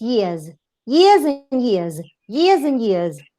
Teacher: vowels are voiced, so the plural should be z.